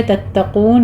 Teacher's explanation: تتقون میں آپ نے تا باریک رکھنا ہے, بس صرف تشدید آپ نے سختی کرنی ہے. تتقون قوف پر پڑھا جائے گا, پیچھے تا باریک رکھنے ہیں.